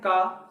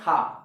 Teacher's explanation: आप फील करेंगे कि का बोलने पर हवा में सांस कम निकल रही है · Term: अल्प प्राण